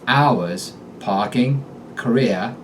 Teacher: But when you're speaking with a Boston accent, final R's vanish and the stump of the vowel is left to rise in pitch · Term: dropped R endings